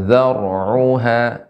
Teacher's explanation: Dzar di sini ra-nya tebal karena ra sukun sebelumnya fathah.